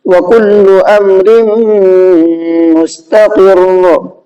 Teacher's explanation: واو میں حرکت کا قاعدہ ہے، اس کو کھینچ کر کے نہیں پڑھنا ہے، اور یہاں پر قاف میں بھی حرکت کا قاعدہ، اس کو بھی نہیں کھینچنا ہے، لام پہ تشدید ہے اور تشدید والا حرف ڈبل پڑھا جاتا ہے، اس لیے لام کو ڈبل پڑھا گیا ہے، اور دوسری بار میں لام کھینچے گا نہیں کیونکہ لام کے اوپر پیش ہے۔